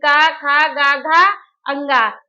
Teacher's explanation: क वर्ग के पांचों वर्ण और ह ये हमारे कंठ से उच्चारित होंगे